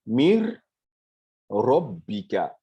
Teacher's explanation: le noun là, il disparaît, et puis la lettre qui suit là va se dédoubler